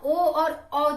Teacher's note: ओ औ का जब हम उच्चारण करेंगे तो हमारा कंठ और ओष्ठ दोनों शामिल हो जाता है, इन्हीं के सहयोग से इनका हम उच्चारण करते हैं।